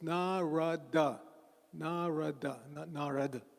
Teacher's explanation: So first thing please don't say narada that's hindiization of Sanskrit bhagatam is presented in Sanskrit it's narada everybody say narada not narada that's hindiization dropping the last a but we don't do that in Sanskrit in Sanskrit every syllable is pronounced